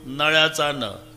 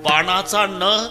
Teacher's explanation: नळ्याचा न उच्चारा तर जीभ दाताला स्पर्श करणार. बाणाचा न उच्चारा अजिबात दाताला लागत नाही, टाळूला.